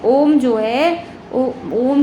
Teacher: ओम के ओकार का उच्चारण जो है सर्वत्र प्लुत ही होता है।